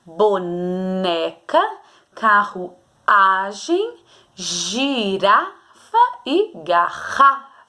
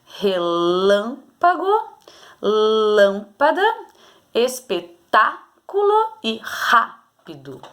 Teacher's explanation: são proparoxítonas a antepenúltima sílaba